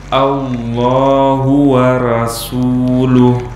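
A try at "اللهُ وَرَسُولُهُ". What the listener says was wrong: Ah, sinnya sudah tipis tapi ro-nya ikut-ikutan tipis sehingga dibaca ra. Nah, itu tidak benar.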